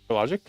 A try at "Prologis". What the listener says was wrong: Prologis. It's it looks like the word logic. It's Logis.